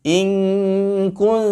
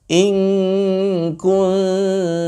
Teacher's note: Q Awards ama sebabnya menurut para ulama karena Nun dengan kap Nun yang berada di ujung lidah dengan kap yang berada di Pangkal lidah itu jauh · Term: ikhfa